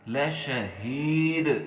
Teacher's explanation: یہاں پہ ہم نے دال کے اوپر قلقلہ کرنا ہے